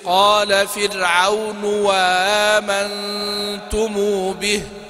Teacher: الهمزة الثانية مسهلة على أي حال، الهمزة الثانية مسهلة على أي حال، لكن عنده إذا وصل بما قبلها يبدل الهمزة الأولى واوا.